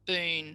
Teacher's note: the two syllables collapse into one and we get boon for balloon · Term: weak syllable